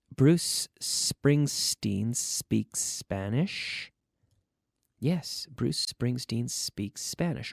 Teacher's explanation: it's the S sound with no action in the vocal cords the vocal cords are mute that is they are not activated so it's not uh there's